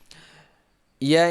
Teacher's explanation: Ya ini keluar di tengah lidah.